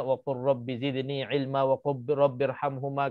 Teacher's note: Jadi cara bacaannya kita kena jelaskan, kita nak kena idghamkan seolah-olah lam itu tak ada terus masuk ra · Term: idgham mutaqaribain